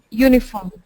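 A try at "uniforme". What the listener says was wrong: No, you're saying U. Don't make it U. Now say un.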